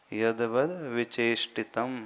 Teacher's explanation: जो द है वो हलंत है यद वत फिर वि चितम वि नहीं बोलना वि दीर्घ नहीं है वि ह्रस्व है